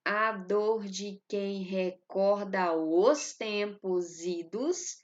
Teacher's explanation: eu tenho uma elisão né com final da palavra recorda e o os formando uma única sílaba métrica e eu não conto a última não conto a sílaba que · a palavra idos, eu tenho a sílaba tônica no i